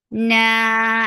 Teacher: Noon will get sifa of kunna, and this kunna is akmal. So keep the sound in your nose for a longer time. Na, and then it is 2 counts long.